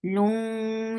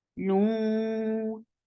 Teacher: Lung, idgham with gunna. Keep the sound in your nose for a longer time.